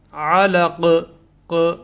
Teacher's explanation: اور یہاں قاف میں علق کا جو قاف ہے اس کے اندر قلقلہ ہے